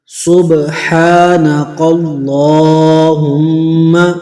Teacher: با میں قلقلہ کرنا ہے، ہا کی آواز صحیح نکالنی ہے